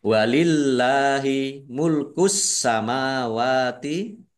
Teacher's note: Allahnya dibaca nipis karena harakat di depannya kasrah. · Ditandai sinnya ada tasdidnya. Sinya dibaca dobel. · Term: alif lam syamsiyah, dibaca tipis